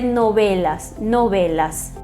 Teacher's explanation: é o intermediário entre v b os lábios semiabertos · E o V, na maioria dos países, tem um som mais puxado para um B. É um intermediário entre V e B, os lábios semi-abertos, né, não muito pressionados, e vai se dizer novelas, novelas.